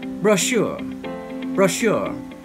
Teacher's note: as you can hear once again the stress is on the second syllable